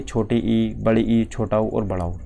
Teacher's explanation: इनमें मुख द्वार जो है वो लगभग बंद सा ही रहता है